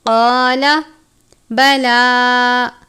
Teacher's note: لام کے اوپر کھڑی زبر ہے، ایک الف کے جتنا لمبا کریں گے